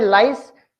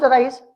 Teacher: When I say lice, the tongue touches to the upper part. When I pronounce rice, the tongue doesn't touch.